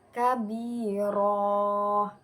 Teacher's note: bacaan panjang pengganti dari bacaan fathah tanwin yang diganti dengan bacaan panjang karena letaknya ada di akhir kalimat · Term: mad iwad